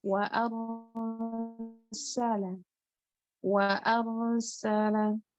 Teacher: Ro di sini dia sukun, tapi dibaca tebal karena sebelumnya harokatnya fathah. Jadi bacanya ro walaupun sukun tetap tebal, tetap tafkhim.